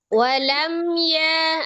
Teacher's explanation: sifatul huruf mim itu adalah tawasut jadi dialirkan sebagian mimnya tetap dia mengalir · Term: izhar syafawi